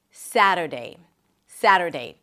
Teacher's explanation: Primary stress is on the first syllable.